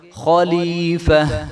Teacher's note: جب یہ یاد رہے کہ جب آخر میں گول تا آتی ہے تو اس کو جو ہے وقف کی صورت میں ہم نے ہائے ساکنہ میں بدل دینا ہے. ٹھیک ہے, جب آخر میں گول تا آ جائے تو اس کے اوپر وقف جب ہم کریں گے تو وہ ہائے ساکنہ میں بدل جائے گی